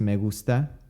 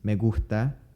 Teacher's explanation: examples of the non-aspirated the aspirated and the omitted S